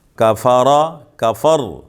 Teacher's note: را کے اوپر زبر ہے، موٹا پڑھیں گے